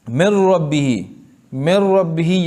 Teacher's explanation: ربہ میں را، نون اور را کا ادغام ہوا بلا غنہ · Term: ادغام بلا غنہ